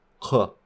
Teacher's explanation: we're just going into the throat so pharyngeal like claw which we can feel our tongue getting very low but it's not at the back of our throats